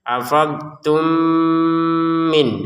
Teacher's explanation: dimasukkan mim yang pertama pada mim yang kedua dan dengan didangungkan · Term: Mim sukun bertemu mim